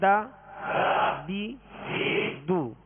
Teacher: اگر ضاد کو باریک پڑھ دیا تو دال محسوس ہوتی ہے، اگر دال کو پر کر دیا تو یہ ضاد محسوس ہوگا، ورنہ اس کا مخرج بھی الگ ہے اور ان کی خوبیاں بھی الگ الگ ہیں. تو دال کو ادا کرتے ہوئے باریک پڑھیں گے. دال زبر دا، دال زیر دی، دال پیش دو، دا دی دو.